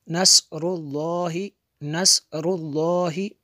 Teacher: تو لفظ اللہ سے پہلے را ہے، اس کو پر پڑھیں گے۔